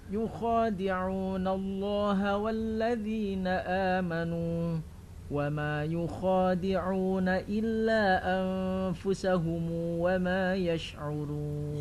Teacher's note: Anfusahum itu kalau Ibnu Katsir أنفسهم iya harus dibaca dengan silah mim silatu mimul jam'i.